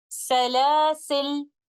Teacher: dropping the alif and reciting the lam with a sukoon